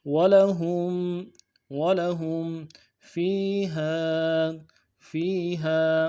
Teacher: میم ساکن میں غنہ کریں گے